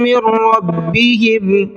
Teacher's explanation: یہاں پر را پر زبر ہے، اس لیے را کو مبھر کے پڑھنا ہے، پر کر کے پڑھنا ہے